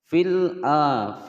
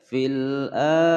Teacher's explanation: al-qamariyah dibaca jelas, tidak boleh dipantulkan